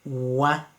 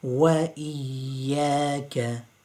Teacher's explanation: The waw has a fatha though. So the waw is round, but the fatha will make it flat.